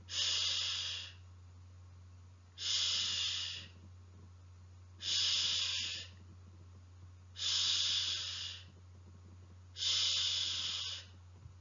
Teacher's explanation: Sound is articulated with the tip and front of the tongue, close to the back of the teeth ridge. The air escapes between the tongue and back of the teeth ridge to pronounce sh.